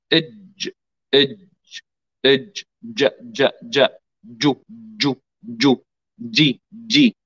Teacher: الجيم من وسط اللسان مع وسط الحنك الأعلى